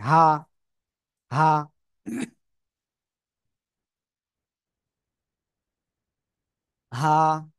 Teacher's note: গলার শুরু থেকে উচ্চারণ হয় হা